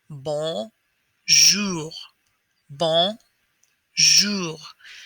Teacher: lip comes up a little bit towards your nose and then the r will come from the back of your throat not forced just very easy it sounds like this to make sure that you are doing